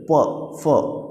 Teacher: अगर देखोगे मूवमेंट कहाँ हो रहा है आपका होठों पर हो रहा है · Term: ओष्ठेय